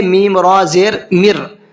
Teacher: من ربکم کے اندر جو ہے اس میں ہوتا یہ ہے کہ اگر نون ساکن کے بعد میں را آتا ہے تو وہاں پر نون ساکن کو پڑھا ہی نہیں جاتا ہے، سرے سے ختم کر دیتے ہیں اس کو، پھر اس کو میم کو ڈائریکٹ را میں ملائیں گے، میم را زیر مر، نون نہیں پڑھا جائے گا، اور را کو منہ بھر کے پڑھنا ہے۔